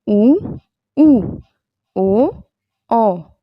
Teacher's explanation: ऐसे वृत्तमुखी उ ऊ ओ औ अ। तो ये इनके उच्चारण में जो हमारा मुख है वो एक गोलाई के आकार में होता है, हमारे होंठ गोलाई के आकार में होते हैं, तो इसलिए इसे वृत्तमुखी कहा जाता है इन्हें।